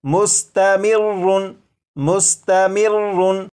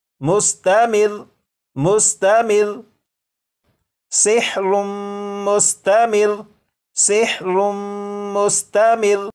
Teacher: रा के ऊपर जो तशदीद है इसे तो पढ़ेंगे, लेकिन रा के ऊपर जो 2 पेश हैं इन्हें ख़त्म कर देंगे। और ये जो लफ्ज़ है मुस्तमिर्रुन, वक्फ में ये पढ़ा जाएगा मुस्तमिर मुस्तमिर सिहरुम मुस्तमिर सिहरुम मुस्तमिर।